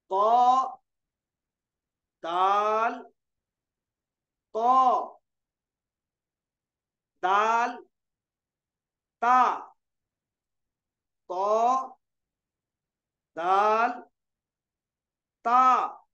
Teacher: 12वां मखरज नितुई, नोके जबान और ऊपर के दरमियानी दांतों की जड़ से 3 हरूफ